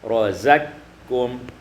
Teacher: idghamul qaf fil kaf, diidghamkan qaf pada kaf